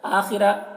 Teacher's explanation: حمزہ میں کھڑا زبر ہے ایک الف کے برابر کھینچ کر پڑھیں گے